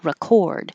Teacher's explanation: If it's the verb, the RE is very hard to hear because it's very short and just a R. record. And the cord really sounds like or, record.